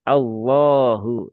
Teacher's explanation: Jadi langsung ke lam dan ditambahkan pangkal lidah yang naik ya. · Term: dibaca tebal